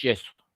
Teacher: Así que en este caso, la palabra yeso, se entiende que lo que tengo es una Y fricativa, porque la pronunciación no es enfática